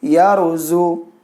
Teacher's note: را ساکن سے پہلے زبر رہے تو بھی را کو موٹا پڑھتے ہیں